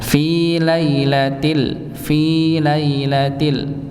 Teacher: Jadi tidak dipanjangkan lamnya · Kalau fi dipanjangkan 2 harakat nggih. Kalau lailati maka dipendekkan 1 harakat saja